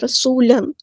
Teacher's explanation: تنوین کے بعد دیکھیں کون سا حرف آئے، میم۔ تو جب تنوین کے بعد میم آئے یعنی یرملون میں سے، ان حروف میں سے آیا، تو ہم یہاں پہ ادغام کریں گے